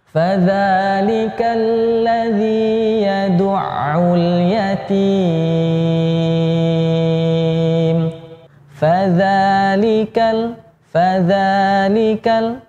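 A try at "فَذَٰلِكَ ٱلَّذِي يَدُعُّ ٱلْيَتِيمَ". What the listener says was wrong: Nah, ini pertengahan aja suaranya. Ya, bukan itu take off. Fadzalikal landing. Ya, jadi tengah-tengah saja. Nah, yatim ini kuncinya ya, supaya tidak fals ya. Yatim boleh di angkat sedikit, sedikit aja.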